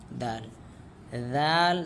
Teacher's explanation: दाल में हमें जिबान की चोटी ऊपर वाले जो दांत हैं वहां लगानी पड़ेगी।